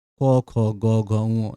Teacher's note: উচ্চারণ জিভের পিছনের অংশ একদম উঁচু হয় আল জিভের কাছাকাছি। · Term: কণ্ঠধ্বনি